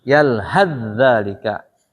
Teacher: Dua kata diidghamkan jadi satu.